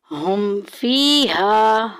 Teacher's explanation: हा जो है ये हलक के नीचे वाले हिस्से से अदा होता है